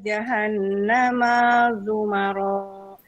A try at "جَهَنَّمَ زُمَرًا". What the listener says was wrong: Pendek, jahannamanya. Jahannam. Jahannama Zumaro, tidak panjang maknya.